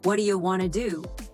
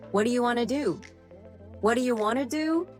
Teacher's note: Yes, what do you becomes what do you, and want to becomes wanna